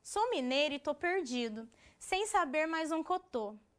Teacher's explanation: o mineiro, em algumas regiões, tem o costume de retirar, né, de fragmentar o final das pronúncias